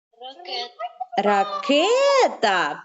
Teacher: наголос буде падати на е на звук е